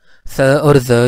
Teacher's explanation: स और ज जो है ये एल्वियोलर फ्रिकेटिव्स हैं